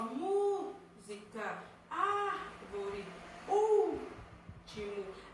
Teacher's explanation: proparoxítonas são aquelas palavras cuja sílaba tônica é a antepenúltima